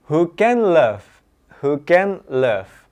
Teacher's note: N dan l masih dalam satu lokasi suara yang sama, yaitu behind the teeth. Maka bisa disambungkan.